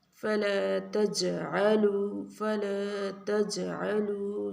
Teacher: جیم کے اوپر کلکلا ہوگا